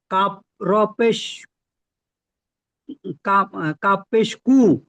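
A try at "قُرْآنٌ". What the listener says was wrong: কব না, কফ কফ আছে, হ্যাঁ?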